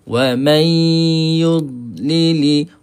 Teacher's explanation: So kita angkat tengah lidah kita kena pada langit atas. Kemudian suara ni kita dengungkan dia. Kita alirkan ke atas ke rongga hidung. Barulah jadi eh bacaan idgham maal ghunnah.